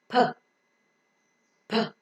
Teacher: Close your lips and see that the soft palate is raised so that unlike an M and N, the air cannot pass through the nose. So the air that is coming out from the lungs is held up in the oral cavity for some time.